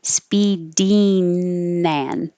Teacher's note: change the ing with the tongue going high in the back for the ng combination to an een with the tongue in the front for in that will make it easier to connect to the a and.